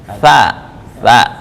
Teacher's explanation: Gigi bawah. Ujung lidah dengan gigi atas, ujung gigi atas.